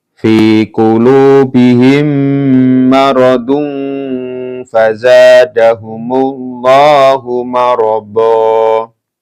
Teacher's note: Ketika diwakafkan marada, bukan marodon tapi marada ya.